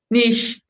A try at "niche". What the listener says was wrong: Good. Mm-hmm.